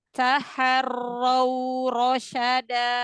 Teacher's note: Lin itu dia lebih dari 1 harokat tapi nggak sampai 2 harokat.